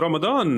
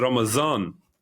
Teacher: the d sound in that is a z sound in certain dialects in certain rural dialects uh also in the persian in in